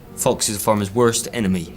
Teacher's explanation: his harder Rs kind of indicate a more rural background